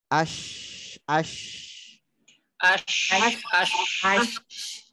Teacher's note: Alirkan suaranya, alirkan udaranya karena itu sifatnya shin dan nyambung.